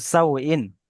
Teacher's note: আউলিন, হ্যাঁ, আউলিনকে তাড়াতাড়ি পড়তে হয়, ওয়াও লিনকে নরম আওয়াজে তাড়াতাড়ি পড়তে হয়